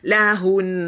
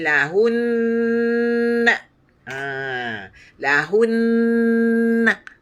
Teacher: Sebab kita jangan lepaskan lidah kita. Bila sebut hun, kita nak berhenti tu, jangan dilepaskan lidah kita. Lahun. Kemaskan lidah kita di nun, makhraj nun.